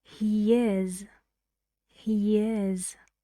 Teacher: When I say he and then is, I say he is. Look, I just put one sound between he and is, and that one sound is y